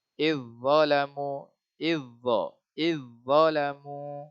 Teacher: za mati bertemu dha, idgham secara kamil, secara sempurna